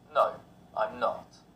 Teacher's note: In short answers, the intonation falls.